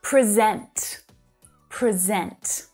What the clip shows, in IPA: prɪ 'zent